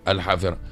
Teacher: الهاء راهو حرف يعني مهموس وحرف هوائي، وبالتالي كثير لا أقول من العوام من المتخصصين، كثير متخصصين بداية الاختصاص متاعهم الهاء ما تسمحهاش، وبالتالي الحافرة الهاء هذيك كما تقول يهدي تبع مليح برشا سواء في الإذاعات المسموعة والمقروءة.